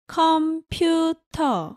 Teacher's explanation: in korean you say computer without the r at the end